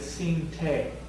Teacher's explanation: So here's if you went close to each other, and we would have expected sini ta. We have, instead of ta, we have te because of the following cha. And we're getting deletion of the final vowel of sini, so we get sin te at the end of this verb.